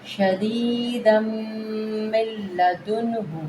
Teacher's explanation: ہونٹوں کو بند کریں گے میم مشدد پہ